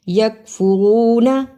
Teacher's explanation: واو مدہ ادا کیا، نا کو جلدی پڑھا